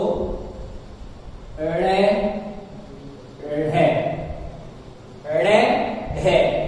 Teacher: उद का मतलब होता है ऊपर से और क्षिप्त का मतलब होता है फेंका हुआ या पटका हुआ। अर्थात वे वर्ण जिनका उच्चारण करते समय जिह्वा जोर से झटके के साथ नीचे फेंकी हुई अथवा पटकी हुई सी प्रतीत होती है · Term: उत्क्षिप्त वर्ण